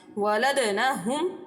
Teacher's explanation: دال حروف قلقلہ ہے، اور قلقلہ حروف جب ساکن ہوں تو ان میں قلقلہ خوب ظاہر ہوتا ہے، اس لیے یہاں پر قلقلہ خوب ظاہر ہوگا۔